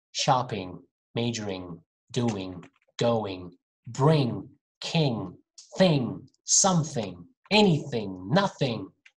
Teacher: my tongue closes my throat so the sound is coming through my nose actually